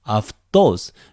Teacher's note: It's another diphthong. It becomes either af or av. In this case, it is followed by a consonant d. So it naturally becomes af.